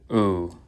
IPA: u